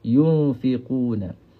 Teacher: Walladina yunfiqu yunfiqu nun mati bertemu dengan huruf fa. Nun mati bertemu dengan huruf fa. Maka hukum di sini adalah ikhfa hakiki. Ha. So kita kena sembunyikan nun ini. Kemudian pergi kepada huruf fa. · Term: ikhfa haqiqi